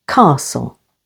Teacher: T is also silent after S, as in castle, with the stress on the first syllable.